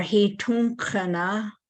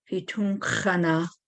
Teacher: there's that K, that guttural aspirated K